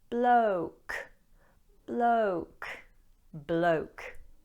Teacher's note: don't say block with a short O, but a moving O, O. Say it with me.